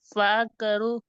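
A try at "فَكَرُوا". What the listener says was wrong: க பிழை. பா தனிப்பா வரணும்.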